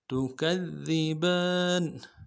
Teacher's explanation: تا کو نرم سے ادا کرنا ہے، کاف کو دال کے ساتھ ملانا ہے، دال باریک ہے، اگلے دال کو نرم سے ادا کرنا ہے، با کے اوپر کھڑا زبر ہے، ایک الف دال میں کھینچیں گے، نون کو نرم سے ادا کریں گے، تکذبان فبأي آلاء ربكما تكذبان.